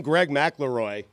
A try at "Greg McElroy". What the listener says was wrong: Yeah, you add an extra L.